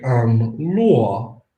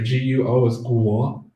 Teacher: you start with the wu, but you open up that wu at the end of the sound